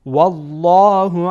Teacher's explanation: والله لام جلاله پر خوانده میشه